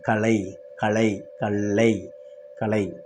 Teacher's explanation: நாக்கின் இரு ஓரங்களும் தடித்து மேலத்தின் நடுப்பகுதியை தொடுவதால் பொது லகரம் பிறக்கிறது